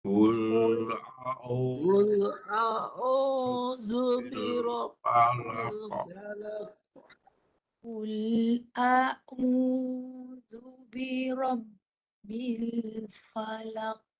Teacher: Keluarkan kat mulut. Suara ain keluar di mulut. Hidung tak boleh masuk.